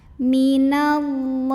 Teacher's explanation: Maka bacanya ditebalkan, pangkal lidah diangkat. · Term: tafkhim